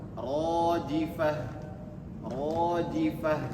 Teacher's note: Rifah dua harakat saja, jangan rojifah terlalu panjang